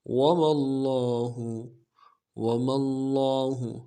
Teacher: میم کو لفظ اللہ کے لام کے ساتھ ملانا ہے، لفظ اللہ کے لام کے اوپر تشدید زور دیں گے